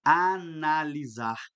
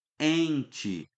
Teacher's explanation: Eu estou nasalizando, tem que jogar o som que sai desse A tem que ser nasal. Joga o som para o nariz.